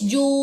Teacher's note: جیم وا پیش جو، بس ہونٹ میرے گول ہے، آواز ایک جگہ جا کے بالکل غائب ہو گئی ہے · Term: واو مد